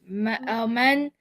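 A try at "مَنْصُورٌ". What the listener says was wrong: But maf'ulun doesn't have an E sound. Why are you putting an E sound? Maf'ulun. Maf'ulun. Mansu. Mansu. Run.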